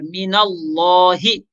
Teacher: لفظ اللہ کو خوب موٹا کر کے پڑھیں گے